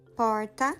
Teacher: O R carioca não é o retroflexo, que é comum no interior de São Paulo e de Minas Gerais